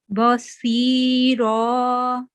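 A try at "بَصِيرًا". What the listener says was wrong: Excellent, mashallah.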